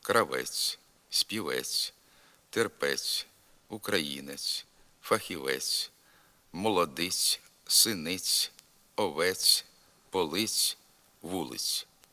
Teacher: приголосний ц у більшості позицій вимовляється м'яко зокрема він м'який на кінці слів